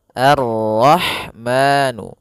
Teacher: alif lam yang ditulis tapi ia tidak dibaca, sehingga kita langsung masuk ke huruf ra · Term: alif lam syamsiyah